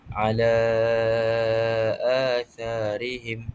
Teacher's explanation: Jadi majiz mufasil ni bawa maksud huruf mad bertemu dengan hamzah pada dua perkataan yang berlainan. Jadi cara bacaannya dipanjangkan sebutan huruf mad dengan kadar empat ataupun lima harakat. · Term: mad jaiz munfasil